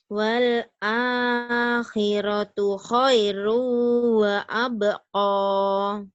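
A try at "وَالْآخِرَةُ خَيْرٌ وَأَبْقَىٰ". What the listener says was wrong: Ko, jangan ko. Wa abqa. Ko, ada haknya itu mah. Wa abqa. koko, baju koko, baju koko, jangan baju kokoh. Wa abqa ya. Wal akhiratu khairu wa abqa.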